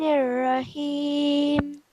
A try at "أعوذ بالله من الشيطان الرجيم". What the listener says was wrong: When you say a'udhu, you said auzu. This is wrong. Do you see where I'm highlighting? It's 3 different letters, and you have to enunciate each letter. So when we read this, we will say a'udhu. A'udhu billahi minash shaitanir rajim.